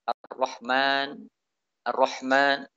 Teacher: makhrajnya sudah benar, namun sifat hamasnya masih lemah. Ya, harus dikuatkan, diperjelas. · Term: Lemahnya sifat hamas